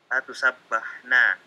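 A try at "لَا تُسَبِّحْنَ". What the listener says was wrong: Ingat itu kalau ada harokat di bawah tasdid kasroh ya. Kasroh. Naam, la tusabbihna itu ya. Kasroh ya, bukan patah. La tusabbihna, sahih gitu. Jadi bukan fathah, dia bukan fathah. Ini kasroh semua ya.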